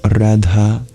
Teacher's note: Radha with an aspirated dha